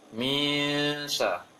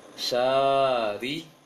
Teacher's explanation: Minsya itu bukan panjang tapi dengung dia.